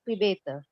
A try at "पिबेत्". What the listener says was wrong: जी पिबेत तो नहीं है, पूरा तो नहीं बोला, आधा पिबेत।